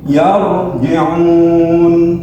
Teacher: Ra sukun sebelumnya berharokat fathah, juga ra dibaca tebal.